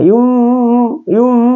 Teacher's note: kalau ini ikhfa ya ikhfa Ifa jadi cara membacanya itu adalah bacaan Ikfa dengan gunna sama atau sedang